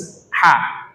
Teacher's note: Alhamdu itu artinya hanya tipis, ha. Kalau makharijul hurufnya itu wasatul halqi, bagian tenggorokan.